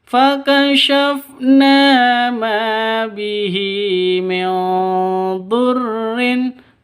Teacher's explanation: Nun mati bertemu dengan dad, samar didengungkan, siap-siap ke huruf dadnya karena ikhfa hakiki